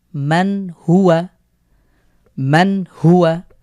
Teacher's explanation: নুন, সাকিনের পর এখানে হা হয়েছে, আমরা এখানে গুন্না ছাড়া স্পষ্ট করে পড়ব